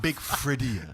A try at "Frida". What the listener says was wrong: The I is silent. Frida. So Frida.